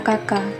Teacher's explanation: k pada kata Kaka suara langit-langit